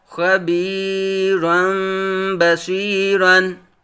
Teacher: لام تنوین منون ہے، تنوین کے بعد حرف با آنے کی وجہ سے اقلاب ہوگا، یعنی تنوین کے نون ساکن کو میم سے بدل کر اخفا کریں گے